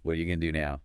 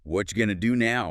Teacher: What are you became really short, like whatcha. Right. And going to, of course, became gonna.